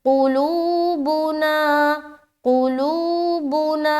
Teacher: قاف کو نہیں کھینچ رہے، لو میں کھینچ رہے، بو کو پھر نہیں کھینچنا، نا میں کھینچنا۔